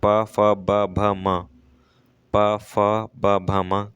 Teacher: ओष्ठ से बोले जाते हैं।